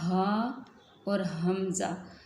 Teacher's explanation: आगे है हा और हमज़ा, इन दोनों का एक ही मखरज है, यानी गले के आखिर जो सीने की तरफ वाला हिस्सा है वहाँ से अदा होते हैं।